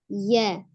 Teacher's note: tempat keluarnya huruf ya adalah pertengahan lidah bertemu dengan langit-langit atas. Kita lihat gambarnya, ini adalah pertengahan lidah yang hampir bertemu dengan langit-langit atas ya.